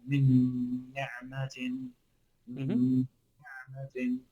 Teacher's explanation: So you're literally just holding on to two noons